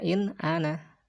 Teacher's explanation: Bunyi suaranya tetap jelas, tidak samar dan tidak mendengung. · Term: izhar